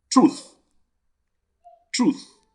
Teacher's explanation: is the voiceless dental fricative sound the voiceless dental fricative sound pronounced as so which of the